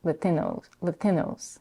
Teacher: the diphthong O, where the end of the diphthong is significantly reduced